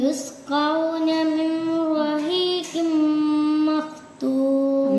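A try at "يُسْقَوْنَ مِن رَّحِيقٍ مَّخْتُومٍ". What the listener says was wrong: മിൻ റഹീഖ് എന്ന് പറയരുത് കേട്ടോ. മിർ റഹീഖിൻ, മിർ റഹീഖിൻ അങ്ങനെയാണ്. യുസ്ഖൗന മിർ റഹീഖിൻ മഖ്തൂം.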